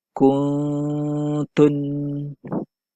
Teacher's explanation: cara membacanya juga mestilah disertai dengan dengung sebanyak dua harokat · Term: ikhfa Hakiki